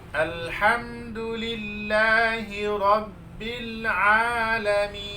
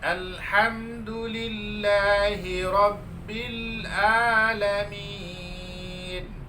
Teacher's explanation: Ain makharijul hurufnya adalah di tengah tenggorokan, sedangkan hamzah makharijul hurufnya adalah paling dalam tenggorokan.